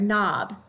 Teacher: When you have the letter K, it's silent when followed by N, such as in the word knob. In the word knob, we hear the N, but we do not hear the K sound. The K is silent.